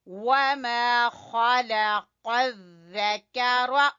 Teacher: قاف جو ہے اس کو پر پڑھیں گے، موٹا پڑھیں گے، زبان کی جڑ سے ادا ہوگا